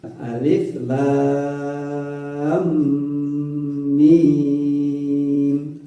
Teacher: Kemudian ada catatan lam, mim, lam, ada mim sukunnya, di lam menghadapi mim, maka mim mati menghadapi mim, idgham mutamatsilin, maka bacanya ditahan, digunakan.